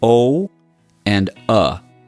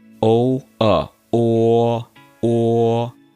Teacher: you have to make two different sounds. O and uh but it gradually opens up